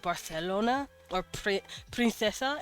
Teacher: Their S's come out slightly as THs. Very slightly. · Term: lisps